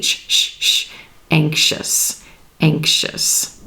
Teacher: the X and that s sound that is part of the x is blending with that I sound and becoming the sh